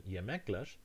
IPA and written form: jemekleʃ (yemekler)